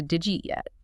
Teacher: the unstressed vowels get dropped entirely to save energy. So, it compresses to did you eat yet?